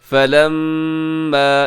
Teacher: یہاں میم مشدد ہے، یہاں غنہ کیجیے گا